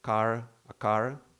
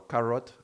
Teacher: So the tongue is getting close, approximates, and then goes away. And so it doesn't really create such an impact. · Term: approximant